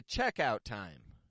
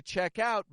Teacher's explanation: nouns are going to be stronger in the beginning the checkout time verbs are going to be stronger in the ending